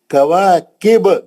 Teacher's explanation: اگر آپ زیر نہیں پڑھ رہے ہیں تو پھر خلخلہ کرنا پڑتا آپ کو